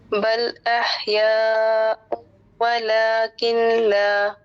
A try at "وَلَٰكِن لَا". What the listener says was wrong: ولیکن لا نہیں، نون کو ڈراپ کر دیں گے کیونکہ لام کے نیچے دو لیٹر ہوتے ہیں، ایک تو لام ساکن ہوگا، دوسرا لام